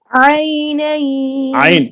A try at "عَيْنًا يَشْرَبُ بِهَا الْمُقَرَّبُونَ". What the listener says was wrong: عین کو صاف کرے، کلیئر.